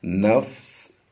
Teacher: دو زیر کی تنوین کو وقف میں ہم نے ساکن کر دینا ہوتا ہے، یعنی جزم سے بدل دیں گے تو یہ بن جائے گا نون فا سین زبر نفس.